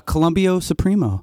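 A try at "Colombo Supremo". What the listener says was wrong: You didn't roll your tongue when you said it.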